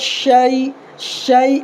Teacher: زبان کا جو بیچ والا حصہ ہے، اوپر کے تالو کے بیچ والے حصے میں لگانا ہے، اس سے شین نکلے گا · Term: بڑی شین